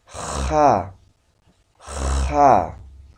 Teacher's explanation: Una J que al momento de articular voy a hacer que estoy friccionando. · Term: J, pero fricativa